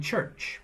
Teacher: the sound begins with a stop and continues with a fricative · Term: affricate